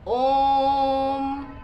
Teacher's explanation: अब सिंपल ओम लिखेंगे, अगर ऐसे ओम लिखा हुआ है तो ज़्यादा टाइम नहीं लगेगा, ओम पढ़ लेंगे हम। लेकिन अगर ओ और माँ के बीच में ये प्लुत स्वर लगा हुआ है तो हम इसे लंबा करके पढ़ेंगे, जैसे कि ओम।